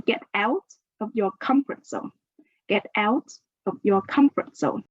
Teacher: So let's put the stress on out and comfort.